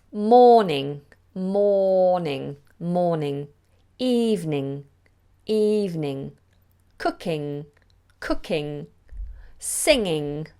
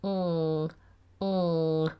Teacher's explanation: you don't release the G you do an NG sound